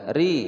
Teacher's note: ra berharokat kasrah dibaca tipis